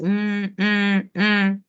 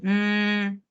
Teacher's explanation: que el sonido de la M es m m m no claramente estamos eh identificando que se juntan los dos labios